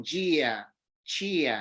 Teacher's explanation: a palatalización tan característica do D e do T seguido de I